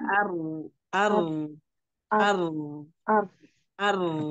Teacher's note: ujung lidah dan sedikit punggung lidah yang bertemu dengan gusi atas